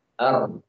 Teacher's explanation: Di antara sifat ro dan sifat yang hanya dimiliki oleh ro adalah bergetar ketika mengucapkannya. Ar. Ya.